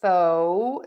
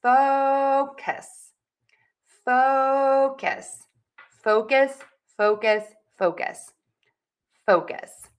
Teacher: Long vowel in the O, fo. So you want to really move your mouth and you want to make that vowel long. And you want to make sure that you stress that syllable.